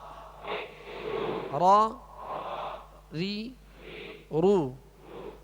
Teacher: اس کی ادائیگی میں آواز میں کپ کپاہٹ ہوگی، جسے رعشہ کہتے ہیں. کپ کپاہٹ ہوگی وہ اس وجہ سے کہ اس کی خوبی ہے کہ اس میں تکرار کی مشابہت ہو، مکمل تکرار نہ ہو کہ را ہو جائے. · را پر زبر اور پیش ہو تو را کو پر یعنی موٹا پڑھیں گے، اور را کے نیچے زیر ہو تو را کو باریک پڑھیں گے